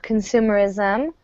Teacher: our simple definition of consumerism, stress on the second syllable there